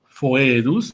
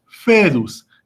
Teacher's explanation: en la clásica se pronuncia la O y la E juntas, es decir, foedus, y en la italiana o eclesiástica se pronuncia únicamente como E, es decir, fedus, que significa la alianza.